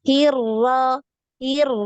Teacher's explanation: Sekali untuk ro ini getarannya sekali aja